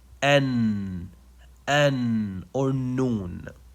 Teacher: noon is pronounce it just by letting the tip of the tongue touch the gum behind the upper in sizers